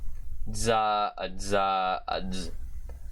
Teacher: Anyway, so this is the voiced version of the alveolar affricate. So this is the voiced alveolar sibilant affricate consonant